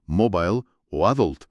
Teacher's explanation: un hablante americano tiende a poner el estrés en la primera sílaba en palabras como mobile o adult y sin embargo desplaza el acento a la segunda sílaba al decir garage.